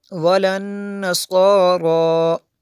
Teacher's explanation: نون میں شدد ہے اس لیے یہاں پہ غنہ کیا